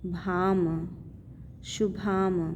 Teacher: भ पे अनुस्वार है तो उसको म पढ़ेंगे